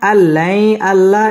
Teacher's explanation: ইদগামে বেলাগুন্না গুন্না ছাড়া পড়তে হবে